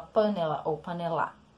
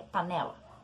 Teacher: se pronuncia a sílaba né de uma forma mais forte do que pá e do que lá